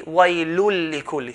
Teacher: Waylun lik will be waylul likulli. So join the tanween into the lam